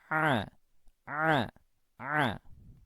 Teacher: itu pengucapannya tidak boleh keluar nafas itu pertama Kemudian yang kedua epiglotisnya juga dipepet kan ke dinding tenggorokan Tetapi lebih mepet ya daripada mepetnya huruf H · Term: huruf Ain